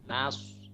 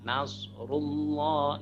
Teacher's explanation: Idza jaa Nasrullah itu nanya tipis tapi sodnya tebal.